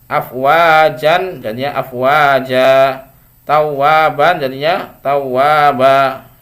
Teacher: setiap fathah tanwin atau fathatain yang diwaqaf ya, maka diganti ya tanwinnya menjadi panjang ya